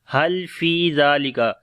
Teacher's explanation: لام کے اوپر صفت توسط ہے، آواز کو تھوڑا کنٹینیو کریں گے. فی یہاں پر یا مدہ ہے، فی کو لمبا کریں گے.